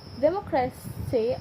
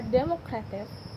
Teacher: the noun democracy has stress on the second syllable, but the adjective democratic places stress on the penultimate syllable because I creates a different prosodic footing.